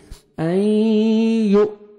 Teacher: حمزہ سکون ہے، جھٹکے سے پڑھیں گے